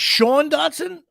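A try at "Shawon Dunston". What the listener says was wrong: Shawan. you might have always pronounced it Sean because,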